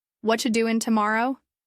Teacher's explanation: You have a strong beat on what, doin', and morrow. Everything else supports that rhythm and often gets compressed.